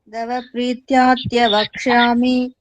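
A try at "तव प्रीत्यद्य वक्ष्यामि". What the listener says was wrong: It's not Dava, it is Tava. Tava Prityadya Vakshyami.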